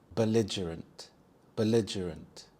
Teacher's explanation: The stress is on the second syllable lig